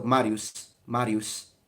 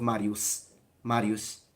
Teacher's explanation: classical Latin of that specific period most likely did not have a frontal S like we do in standard Italian · it sounds in between a sh and a s. It's in between. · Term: retracted S, Retracted S